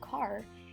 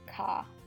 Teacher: in the Chicago urban dialect, you hear the ah sound from the open O. Instead of car, you hear ka.